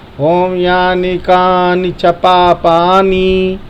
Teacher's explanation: बस ध्यान योग्य देने वाली बातें ये हैं कि जो पाई लगा है उसी का उच्चारण करना है, यानी कानी पापानी नहीं बोलना है। लोग धुन में बोलते हैं ओम यानी कानी च पापानी, बस वहीं गलती हो जाता है, बड़ी की पाई लग जाती है